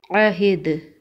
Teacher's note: وقف کی صورت میں دال پر قلقلہ ہوگا کیونکہ دال حروف قلقلہ میں سے ہے